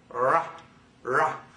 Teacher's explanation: but as if you were holding water in your tongue ra you're voicing and then flicking forward with the tongue so it's spooned up